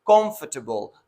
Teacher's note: the stresses on the first syllable where students normally put a stress on table